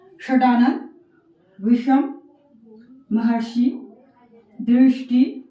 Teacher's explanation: मूर्धन्य श में जीवा को थोड़ा मुड़ाकर जैसे हम ट, ठ का उच्चारण करते हैं, वहीं से इस श का उच्चारण करते हुए आपने इन शब्दों का उच्चारण करना है, तो अंतर आपको समझ में आ जाएगा।